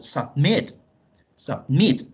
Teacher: Submit lleva el acento en la última sílaba